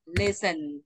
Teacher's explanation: không sắc đâu chỉ hơi thả thôi